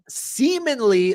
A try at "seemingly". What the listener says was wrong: You pronounce that word very weirdly. I'm like, you didn't put the G in there, homie.